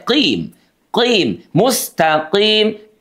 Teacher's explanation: Q-nya ini coba perhatikan dari pangkal lidah terangkat ke langit-langit. Oke, jangan didorong ke depan. Kalau didorong ke depan jadi qim ditahan di belakang itu paling ujung ya. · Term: huruf Q, huruf qi